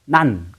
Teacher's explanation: 그래서 이 니은을 받침으로 붙이면 난 이렇게 발음하면 혀끝이 윗 잇몸에 닿는 모양임을 알 수 있습니다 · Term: 혀소리 니은